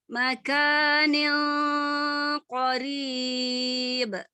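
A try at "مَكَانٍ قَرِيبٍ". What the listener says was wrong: Kurang tebal sedikit dengungnya, tebelin lagi.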